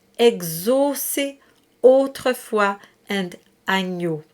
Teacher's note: there are closed O's. They just aren't associated to the O. They're associated to AUs and EAUs.